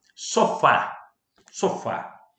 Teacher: a sílaba tônica se encontra no Fá, a última sílaba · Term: oxítona